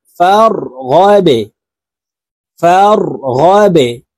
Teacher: فا را زبر فار, غين বা জবর গাবে, বা কলকলার হরফ নিচের দিকে ধাবিত করে ধাক্কা দিয়ে উচ্চারণ করব।